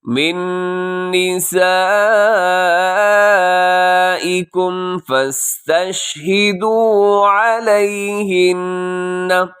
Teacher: علیہن اس میں نون مشدد پہ غنہ کیجیے گا